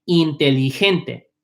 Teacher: We don't say J. The G becomes an H. It's pronounced like an H.